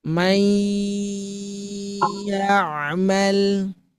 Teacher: Masukkan nun ke ya, kemudian keluarkan dari hidung. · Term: dengungan